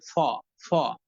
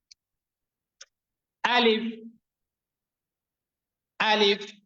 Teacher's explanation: আলিফ সবার শেষে কিন্তু প এর মতো উচ্চারণ যাতে না হয়, সবার শেষে কিন্তু ফ এর মতো উচ্চারণ হবে, ফ ফ, হ্যাঁ, বাতাস বের হয়ে যাবে, প নয় ফ